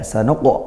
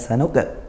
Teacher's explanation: Qalqalahnya sughra karena dia tidak waqaf ya, tidak dibaca waqaf, sukun asli dari huruf qalqalahnya. Huruf qaf maka huruf tebal, maka qalqalahnya juga tebal, pantulannya tebal. Ya, sanuq bukan sanuqa.